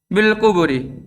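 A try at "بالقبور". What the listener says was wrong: Panjang.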